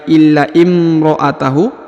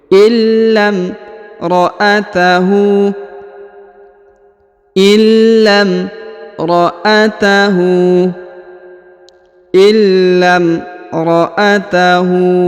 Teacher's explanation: Perhatikan huruf la ketika bertemu dengan alif atau hamzah wasol yang di depannya terdapat mim sukun, maka huruf lam langsung ke mim ya, langsung disambung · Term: hamzah penyambung